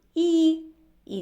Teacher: звук і і пом'якшив попередній звук в